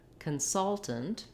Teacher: Then we are stressing on the salt here, like we did in the verb consult, consultant. So it is a noun, but it has second syllable stress.